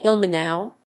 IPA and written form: ˈɪlmənaʊ̯ (Ilmenau)